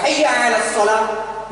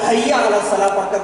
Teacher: ایسے ہی ہا اور ہا آپ دیکھیں کہ عربی میں ہا حلق کے نیچے والی آواز سے موٹی نکلی ہا، اور ہا درمیان میں زبان کو تھوڑا سا حلق کو تھوڑا دبا کر کے ہا نکالا جا رہا ہے، حیا علی الصلاۃ، مگر اردو والا حیا علی الصلاۃ پڑھتا ہے۔